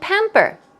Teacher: stress goes on the first syllable